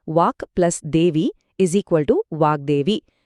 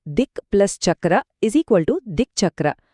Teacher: ಒಂದು ಕಠಿಣ ವ್ಯಂಜನದ ಮುಂದೆ ಇನ್ನೊಂದು ಕಠಿಣ ವ್ಯಂಜನ ಬಂದರೆ ಆ ಧ್ವನಿ ಮೃದುವಾಗುವಿಕೆ ನಿಯಮ ಅಪ್ಲೈ ಆಗಲ್ಲ ಇದು ಹೇಗಂದ್ರೆ ಎರಡು ಗಟ್ಟಿ ವಸ್ತುಗಳು ಡಿಕ್ಕಿ ಹೊಡೆದಾಗೆ ಯಾವುದು ಬಗ್ಗಲ್ಲ ಹಾಗೆ ಉಳಿಯತ್ತೆ.